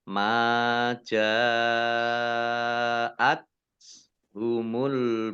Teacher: tak sukun ini dibaca T tapi keluar S-nya sedikit ya